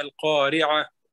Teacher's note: اگر وقف کریں گے تو تا تانیث ہے تو اس پہ ہم ہا کی آواز آئے گی آخر میں